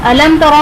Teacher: अलम तरा में मीम साकिन के बाद हर्फ बा और मीम के अलावा हर्फ ता आ रहा है, तो इसलिए यहाँ पर इजहार शफवी का कायदा बनेगा, यहाँ पर गुन्ना नहीं करेंगे। तरा में रॉ पर ज़बर है, रॉ पुर पढ़ा जाएगा।